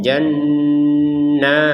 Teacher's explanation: Ya, nunnya ini sama-sama bertasydid, harus kita dengungkan. Ini dengung sekaligus ada panjangnya ini jannat. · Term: nun bertasydid